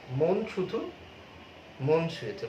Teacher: আসলে মন শব্দটিতে অধ্বনির সংবৃত উচ্চারণ হচ্ছে